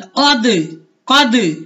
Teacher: قاف زبر دال قد، قاف زبر دال قد، قاف موٹے حروف میں سے ہے، قاف کو دال کے ساتھ ملائیں گے اور یہ دال حروف قلقلہ میں سے ہے، اس کو ہلائیں گے۔ قاف زبر دال قد، قد، یہ دیکھیں میں ہلا رہا ہوں دال کو، قد نہیں کر رہا، قد۔